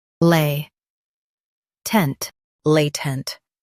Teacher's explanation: Stress lay and keep tent light.